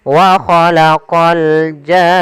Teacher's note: Panjangkan janya dulu enam harakat baru masuk ke nun. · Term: mad lazim kalimi mussaqqal, mad lazim kalimi musaqqal